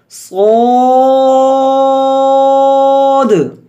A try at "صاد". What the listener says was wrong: صو کی واو کی آواز نہ ہو، الف کی آواز ہو اور الف موٹا بھی ہو.